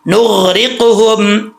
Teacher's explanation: نغرقہم، نون کے بعد غین ہے، غین حروف مستعلیہ میں سے ہے، اس کو پر پڑھیں گے، موٹا پڑھیں گے، ٹھیک ہے. آگے را کے نیچے زیر ہے، آپ کو بتایا تھا کہ را کے نیچے زیر ہو یا را ساکن سے پہلے زیر ہو تو را بریک پڑھا جاتا ہے، یہاں پر را بریک ہے.